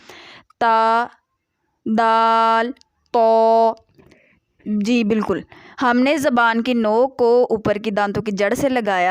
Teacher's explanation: जबान की नोक और ऊपर के दांतों की जड़ से अदा होते हैं